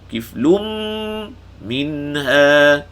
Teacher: Kiflum, tanwin bertemu mim, idgham al ghunnah.